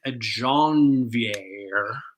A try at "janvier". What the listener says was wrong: Janvier. Don't pronounce the R. You were so Central Alberta, it hurts.